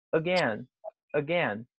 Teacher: Você tem duas sílabas. A sílaba final, que é o gain, ele é a forte. A primeira parte ali, que é o A sozinho, ele tem som de A.